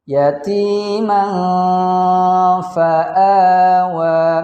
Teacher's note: Tanwin bertemu dengan fa, maka hukumnya ikhfa, dibaca dengung.